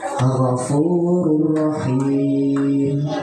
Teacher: idgham bila gunah, cara bacanya memasukkan tanpa dengung, adalah nun sukun atau tanwin bertemu dengan 2 huruf, yaitu lam dan ro.